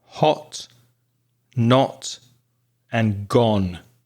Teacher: The next sound is O. So your mouth is making a circle. It's round with the sound O. And we find that sound in words like hot, not, and gone in British pronunciation.